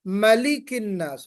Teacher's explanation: میم پہ زبر ہے، فتحہ. اس پہ ہم الف کے ساتھ یا کھڑا زبر کے ساتھ ہم نہیں پڑھیں گے، ملک الناس پڑھیں گے.